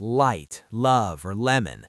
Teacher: Your tongue touches the ridge behind your upper teeth. It's very clear.